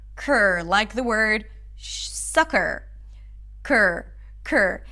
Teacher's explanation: So to say this word, you want to start with a k sound and then bring the tongue up for the R.